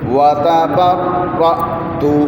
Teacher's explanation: حمزہ کے اوپر جزم ہو تو آواز کو جھٹکا دے کر پڑھتے ہیں